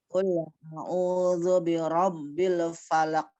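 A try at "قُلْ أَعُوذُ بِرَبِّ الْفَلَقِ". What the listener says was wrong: Falaq. Enggak ada qalqalahnya. Falaq. Pantulan ya. Falaq.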